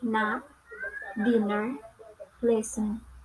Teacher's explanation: Next is English consonant N. It belongs to alveolar and nasal.